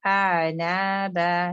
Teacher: make sure कि आ जो है डीपेस्ट पार्ट पहले आएगा, फिर आइन का मखरज मिडिल पार्ट में आएगा